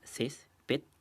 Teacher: Como en el caso de césped, que se separa en dos sílabas, césped, y la mayor fuerza de voz está en la sílaba ces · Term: graves